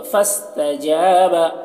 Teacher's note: جیم میں الف مدہ ہے، اسے ایک الف کے برابر کھینچ کر پڑھیں گے